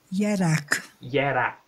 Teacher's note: So there's like a schwa put between the final RG.